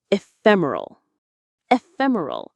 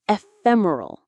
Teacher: stress on the second syllable fem.